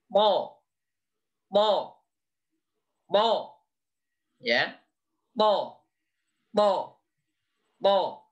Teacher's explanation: Yang berikutnya kita mengenal tempat keluarnya huruf po. Po, po, po sama dengan ta. Bedanya punggung lidahnya terangkat.